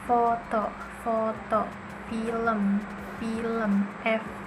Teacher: udara keluar dengan gesekan. Bunyinya itu bunyi geser tanpa suara